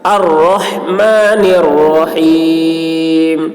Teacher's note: لیکن اگر یہاں پر ٹھہر جاتے ہیں اور یہاں سے پڑھیں گے تو الف پہ زبر پڑھیں گے، الف پہ زبر پڑھیں گے، را موٹی ہوگی اس کی آواز، اور ہا حلق سے ادا کریں گے